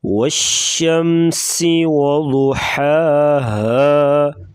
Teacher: سین سیٹی جیسی آواز نکالیں گے